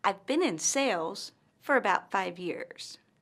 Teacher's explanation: pauses after the word sales and 5 years.